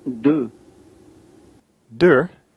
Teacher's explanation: deux, Deux, the number two, is a vocal vowel. So again, we won't hear vibration or feel vibration in the nose area, but rather further down in the throat